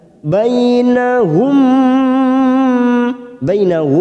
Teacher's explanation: mim sukun bertemu mim, namanya idgham mimi, kita tekan selama 3 ketuk